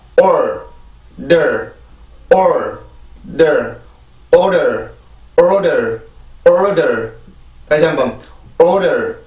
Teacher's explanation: R 발음의 느낌을 살려주고 그 다음에 D 발음으로 바로 넘어가서 이 두 번째 음절을 만들어주면 돼요